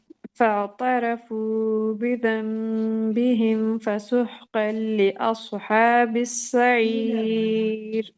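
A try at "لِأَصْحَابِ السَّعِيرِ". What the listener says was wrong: میں بس یہ کہوں گی جب آپ نے اس پڑھا نا تو تھوڑا قلقلہ جیسے ہو گیا، اس کی طرح ہو گیا، ٹھیک ہے.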